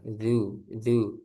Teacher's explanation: zalnya jangan terlalu tegang nanti jadi tebal.